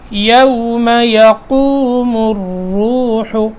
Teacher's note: قاف بھی موٹا اور آگے را بھی موٹا